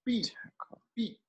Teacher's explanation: Você engole o T.